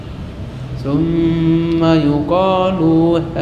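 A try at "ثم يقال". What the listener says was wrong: Lu pendek. Summa yuqalu luha.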